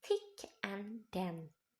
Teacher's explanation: Selanjutnya ada interdental or between teeth produced tongue tip on or near the inner surface of the upper teeth